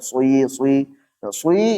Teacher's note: harakat kasrah dengan damah dicampur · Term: ismam